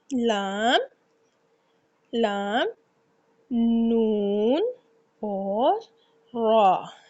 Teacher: इन तीनों का मुखरीज है जुबान का किनारा और ऊपर के दांतों की जड़ के तालू के जानिब वाले हिस्से से अदा किया जाता है जुबान के किनारा और ऊपर के दांतों की जड़ है वो तालू की जानिब वाला जो हिस्सा है वहां से लाम नून और र लाम नून और र की अदायगी की जाती है।